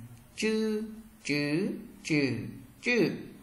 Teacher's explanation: Chữ ZH các bạn cong lưỡi không bật hơi và đọc giống trời nhẹ.